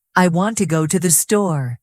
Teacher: The strong beats are on want and store. The small words, to and the, move faster. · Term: rhythm